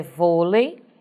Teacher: recebeu acento circunflexo porque esse vô é um som fechado, porém a palavra termina em EI, vôlei, terminou em EI, é uma paroxítona acentuada, só que com acento circunflexo, ok?